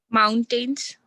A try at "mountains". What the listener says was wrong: No, you're pronouncing it as ten. It's supposed to be ton. So mountain.